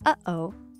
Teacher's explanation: this quirky catch in your throat pause between uh-oh